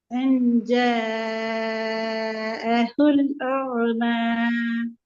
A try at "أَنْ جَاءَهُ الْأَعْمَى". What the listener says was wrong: சரி ஐன கலக்கக்கூடாது. கலக்கிற எழுத்து ஐன இல்ல. அஅம. அஅம. இப்போதைக்கு நீங்க ஐன கலக்காம பிராக்டிஸ் பண்ணுங்க.